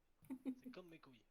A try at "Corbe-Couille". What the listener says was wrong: Non, Corbe-Couille. Et le R, Corbe-Couille.